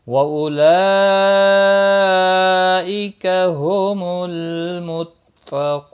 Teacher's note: व उलाइका हुमुल मुत्तक़ून। व उलाइका मद मुत्सिल है, 4 अलिफ के बराबर खींच कर पढ़ेंगे।